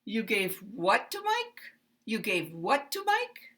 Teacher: it's going to rise and then it's going to stay up there to the end all the way